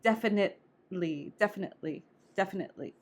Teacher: you basically stop the noise in your throat for a second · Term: glottal stop